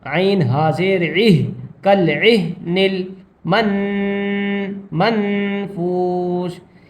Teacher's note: عین کو حلق سے نکالیں گے اور ہا کو سینے سے